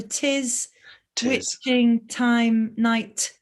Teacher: of so there's sort of alliterative nature of that voiceless plosive. It's a voiceless plosive, which means that we can't get any sustain behind a voiceless plosive. We can't get any resonance behind it because it's voiceless and it's a plosive, so it's really short.